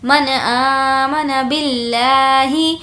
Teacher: لفظ اللہ کو ہمیں باریک پڑھنا ہے کیونکہ اس سے پہلے زیر ہے۔